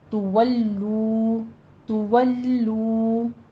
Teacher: بر ان تولو میں نون ساکن کا قاعدہ اخفا حقیقی کریں گے، 2 کاؤنٹ کرنا ہے. تولو میں دونوں ہونٹ گول کر لیجئے، لام کے اوپر تشدید ادا کیجئے. تولو، تولو، تولو نہیں کہنا، لو 2 کاؤنٹ کرنے ہیں.